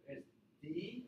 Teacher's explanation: So this will be a stop alveolar consonant with 0 millisecond VOT. So I release the air at the same time as my vocal cord starts vibrating.